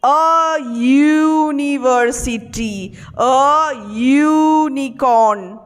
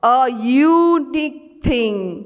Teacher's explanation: যখন ইউটা বলছো তখন একটা ওয়াই আসছে আগে, শব্দটা সাউন্ডটা শোনো ওয়াই, আর ওয়াই তোমরা জানো একটা কনসোনেন্ট সাউন্ড, তাই জন্য এই শব্দগুলোর আগে বসবে।